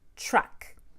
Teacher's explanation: Americans don't actually say a T and an R when we have a TR. We say a CHR, truck. To make the CH, I'll have to round my lips and use the middle of the tongue touching the middle of the top of my mouth.